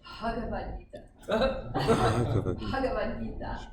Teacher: So it's the combination of Ba and Ha, but with no vowel sound. So it's just Ha.